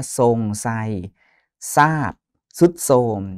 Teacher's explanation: ตัวททหารรเรือนะออกเสียงเป็นซนะครับ อย่างเช่นคำว่าทรงไซซะทรุดโทรมอย่างนี้เป็นต้นนะรออกเสียงเป็นซอนะครับการสะกดไม่ตรงตามมาตรานะปกติคำภาษาไทย